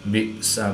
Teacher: حمزہ ساکن ہے تو اس کو جھٹکا دے کر پڑھیں گے